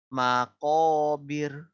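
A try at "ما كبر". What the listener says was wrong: Nah, bagus. Itu tipis.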